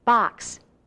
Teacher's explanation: the main sound of X is like K and s together